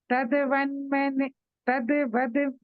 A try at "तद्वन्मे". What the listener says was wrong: नहीं, यहाँ वद नहीं है, तद्वन्मे।